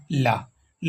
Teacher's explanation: में जो है उसका अगला भाग मसूड़ों को छूता है तथा वायु पार्श्व भाग से निकल जाती है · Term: पार्श्विक व्यंजन